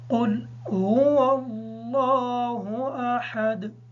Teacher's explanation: لفظ اللہ کا نام پر ہوگا اور ہا کو کلیئر پڑھیں گے، دال پر قلقلہ ہوگا۔